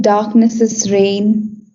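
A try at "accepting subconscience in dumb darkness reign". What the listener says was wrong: cannot no you're not allowed to say darknesses because there is that punctuation mark. darkness reign.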